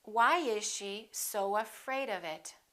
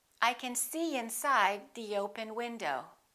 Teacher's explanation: we insert a very little y and a very little w sound between two vowels.